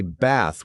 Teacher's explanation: Your jaw needs to drop more for the word bath. We don't say bath with a flat tongue. We say bath with a deep hollow throat.